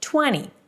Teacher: I'm not pronouncing the T here because the T after an N is often dropped